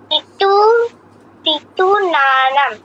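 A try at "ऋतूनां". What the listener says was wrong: না, দুটো নয়, নাং। ঋতু নাং, শুধু নাং, না নাং নয়। নাম নয়, অনুসারের পর ক আছে তাই নাং হবে।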